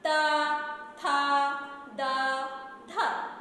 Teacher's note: तो हमारा जीभ जो है और दांत दोनों टच हो रहे हैं।